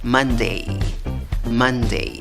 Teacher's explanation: la fuerza de voz en la primera sílaba